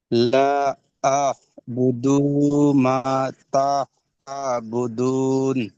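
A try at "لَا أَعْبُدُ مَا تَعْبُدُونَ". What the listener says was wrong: এখানে এই যে লা আ'বুদু, টান দিচ্ছেন কেন? দাল পেশ দু, দালের উপর কি এসছে? পেশটা কি? হ্যাঁ, হারাকাতে পড়া কেমন ভাবে পড়তে হয়? হারাকাতে পড়াকে কেমন ভাবে পড়তে হয়? টান দেওয়া।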